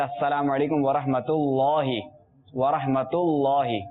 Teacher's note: اس میں جلالت کا لام وہ پر رہے گا اور تا باریک